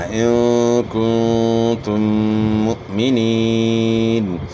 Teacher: اور حمزہ جو ہے ساکن ہے، اس میں جھٹکے کی آواز ہوگی، مو پڑھنا ہے، منہ نہیں پڑھنا۔